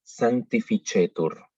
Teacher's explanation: la C, cuando está seguida de E o de I, la pronunciamos ch